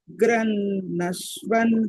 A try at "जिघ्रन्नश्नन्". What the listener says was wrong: स्पृशन् जिघ्रन्नश्नन् ashnan not ashva ashna is to eat so jighranashnan how we say anna double na so jighrannashnan like that Pashyan start from there ashwa is not there ashnan